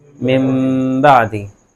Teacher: نون کو میم سے بدل کر غنہ کر دیا جاتا ہے